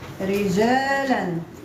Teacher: ترقق الراء وصلا ووقفا بسبب الكسر في الراء لانها في اول الكلمه